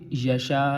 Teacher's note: آگے یشا یہاں پہ 5 الفی مد ہے، 3 سے 5 الفی، مطلب 3 الفی بھی کر سکتے ہیں اور 5 الفی بھی کر سکتے ہیں